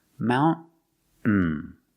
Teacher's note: You can say mountain, making the T sound, mountain, mountain. Or you can make a stop T, mount, put the tongue up and stop the air, and then fall to the N, mountain. Both pronunciations are correct.